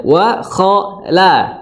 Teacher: la-nya tipis, kho-nya tebal, ya. Tadi, ya, yang dibahas sebelumnya, huruf yang tebal, kho, yang bunyinya o, itu tidak dimonyongkan kedua bibirnya, ya.